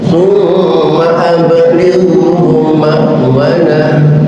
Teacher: Fa ajirhu hatta yasma' kalam Allah thumma abligh ba qalqalah kan sedangkan ghin bukan huruf qalqalah, maka jangan diqalqalahkan, jangan dua-duanya diqalqalahkan sehingga dibaca ablighu, jangan. Ba saja yang qalqalah, ghinnya tidak qalqalah.